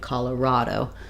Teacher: So for Colorado, Colorado. Stress is on ra, but ka has some secondary stress.